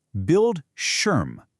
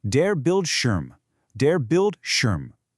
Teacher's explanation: The I is short and punchy and that sch sound, it's just like the sch in a word like shoe.